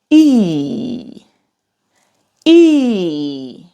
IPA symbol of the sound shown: i: